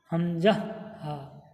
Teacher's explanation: হালাকের বা কণ্ঠনালীর শুরু হতে উচ্চারিত হয় হামজা হা।